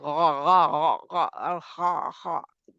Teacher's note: آخری حصہ حلق کا جو منہ کی جانب ہے وہ غین اور خا، جہاں پہ غا غا غا غا اور خا خا، یہ دونوں ہی موٹے پڑے جانے والے حروف ہیں، حروف مستعلیہ.